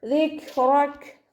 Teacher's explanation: കാഫിന് ഇവിടെ സുക്കൂനാണല്ലോ, അപ്പോൾ കുറച്ച് ഏറെ പുറത്തോട്ട് പോണ സൗണ്ടിൽ ഉച്ചരിക്കുക.